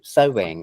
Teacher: the consonant sound that connects the two syllables in the word sewing is w, right? That's why it sounds like two syllables. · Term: the w sound